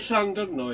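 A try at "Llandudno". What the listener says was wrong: The U is pronounced like an I.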